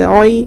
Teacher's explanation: یا ساکن سے پہلے عین کے اوپر زبر ہے، نرم آواز کے ساتھ جلد ادا کریں گے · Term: یا لین